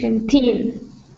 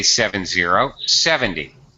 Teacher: you really need to be careful to give primary stress to teen at the end to differentiate it between 70.